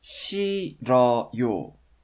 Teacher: It's actually pronounced 싫어요. Because of the fact that the final h consonant is silent, the stem is actually pronounced 실, only with the final l consonant. And this l consonant moves up to the initial of the next block.